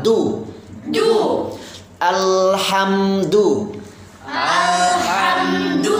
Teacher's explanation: huruf Dal di Pangkal gigi serinya